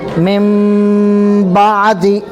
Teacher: یہاں پر بھی کیا آ رہا ہے؟ نون ساکن کے بعد کیا با آ رہا ہے، اس لیے نون کو میم سے بدل کر پڑھیں گے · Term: اقلاب